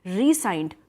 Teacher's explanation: the s is pronounced as s only and you emphasize the first syllable